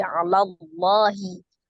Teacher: Ada alif lam jalalah, alif lam yang melekat pada lafaz Allah. Dibaca dengan tebal karena sebelum lafaz jalalahnya itu adalah huruf yang berbaris fathah. Jadi Allahi, la-nya dibaca 2 harakat.